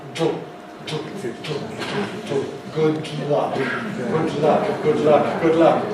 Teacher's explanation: What happens is the sides of the tongue come down. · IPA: [ˈgʊd ˈlʌk]